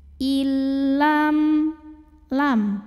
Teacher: nunnya dileburkan ke lam il tanpa didengungkan. Jadi cukup ditekan. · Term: idgham bila gunnah